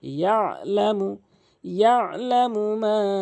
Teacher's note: এখানে আইন উচ্চারণ হলকের মাঝখান থেকে · এরপরে ইয়ালামু, এখানে অধিকাংশ লোক আইনটিকে চাপ দিয়ে বলে না, এখানে আইনের উচ্চারণ করে না, এখানে আইনের উচ্চারণ হলকের মাঝখান থেকে